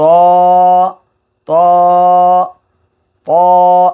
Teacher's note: জিহ্বার আগা সামনের উপরে দুই দাঁতের গোড়ার সঙ্গে লাগা